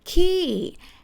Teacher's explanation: the word ki with falling tone